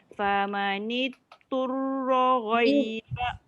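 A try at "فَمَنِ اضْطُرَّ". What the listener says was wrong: Famanil tebal. Nil. Angkat lidah semua. Nil supaya dia jadi tebal. Kalau kita fokus angkat dekat ujung lidah je depan, dia jadi dal lah. Famanid. Famanil. Daripada belakang ke tengah, bawa ke depan. Semua lidah terangkat.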